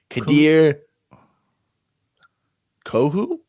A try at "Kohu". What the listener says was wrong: Kohu, I think the H is silent.